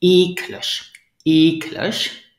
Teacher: do you hear the stress is on the first syllable